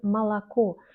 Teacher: écrit souvent o mais on prononce comme a pourquoi parce que dès que la lettre O n'est pas accentuée on la lit comme a